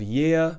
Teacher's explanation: we're not pronouncing the r at the end of this word because we're speaking in RP